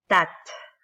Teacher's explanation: But when you say tat, like the ta with sukun, a lot of air will come out.